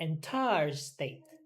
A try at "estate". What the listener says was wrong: Estate. Estate. Okay, not state, but estate.